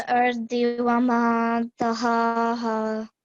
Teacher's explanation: the letter ha carries the vertical fatha, so you have to prolong it for 2 seconds